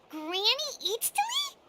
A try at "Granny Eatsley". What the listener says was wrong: Yes, Granny Eatsley. But emphasis on Eatsley, not Granny.